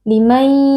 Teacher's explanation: dibaca dengan mengidghamkan memasukkan huruf nun ke dalam huruf ya kemudian disertai dengan dengung yang dipanjangkan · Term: idgham bi gunnah